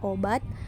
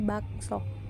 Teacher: o Tengah atas belakang bundar dan o Tengah bawah belakang bundar